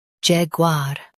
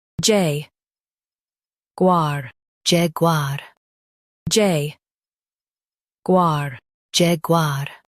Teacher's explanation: In U.S., stress jag and say var clearly. In UK, stress jag and say u softly.